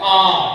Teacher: तो यदि इन दोनों की बात करें, पहले हम बात करें विवृत की, तो विवृत कौन सा है, विवृत होता है आ का जब हम उच्चारण करते हैं तो वो अपना एकदम खुलता है